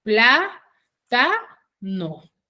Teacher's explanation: al tener su sílaba tónica en la antepenúltima sílaba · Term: esdrújula